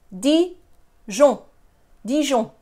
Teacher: the nasal sound is one sound. The N is not pronounced. So it's Dijon, Dijon.